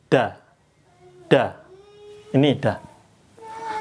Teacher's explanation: Kalau dal itu ujung lidahnya nempelnya keras.